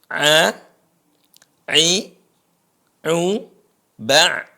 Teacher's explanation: Perhatikan huruf ain. Keluarnya di tengah tenggorokan.